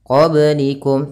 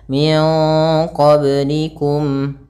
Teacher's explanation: pada lafal ba sukun ini ada bacaan qalqalah, yaitu kita pantulkan baknya qablikum, tapi jangan sampai kita yang pertama tidak memantulkannya qablikum, kesalahan.